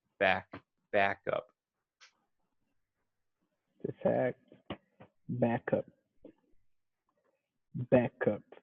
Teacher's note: something to note with the word backup is that you want to emphasize the first syllable